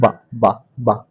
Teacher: बोल के देखो कहां से निकल रही, ओंठ, आपकी दोनों ओंठ मिल रही तो ओष्ठ ध्वनि कहलाती।